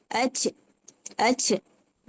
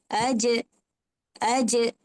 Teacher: dia tak ada bunyi hams. Tak ada bunyi angin. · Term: huruf jim